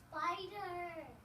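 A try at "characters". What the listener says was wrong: Is there a s at the beginning?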